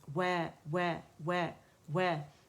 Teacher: वाव को बारीक पढ़ा जाएगा और होंठों की गोलाई से इसको हम अदा करेंगे